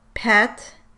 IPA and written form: pʰɛt˭ (PET)